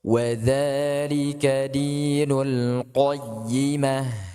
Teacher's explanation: Q tebal. Jangan sampai dia seperti imalah ya, seperti q tidak.